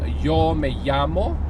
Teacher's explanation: in Argentina, they use, where there's a double L or a Y, they use a sh sound